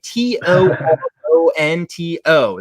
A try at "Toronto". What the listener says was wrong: Toronto. We don't say the second T when we pronounce it here.